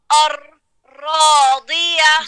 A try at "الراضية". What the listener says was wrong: ابھی بھی تھوڑی سی اور زبان کو آگے کرے.